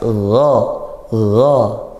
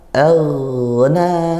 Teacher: Pangkal lidah dinaikkan dan makhrajnya dari tenggorokan atas. Dari tenggorokan atas gha, ngalir sedikit suaranya. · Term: ghain